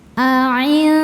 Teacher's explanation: ujung lidah kita sudah mau persiapan menuju pangkal gigi seri atas, makhraj dari huruf dal ya, tapi belum nyampe sehingga menghasilkan suara yang keluar dari mulut, aliran suara dari mulut masih banyak, bunyi dengung yang masuk hidung ya masih sedikit. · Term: ikhfa hakiki aqrab